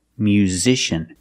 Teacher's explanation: We see the S makes a Z sound with a vibration. Z, like in zebra.